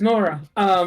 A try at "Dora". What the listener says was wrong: Nora. No, Dora. Dora. No, Dora. With a D. Like for dog. Dora.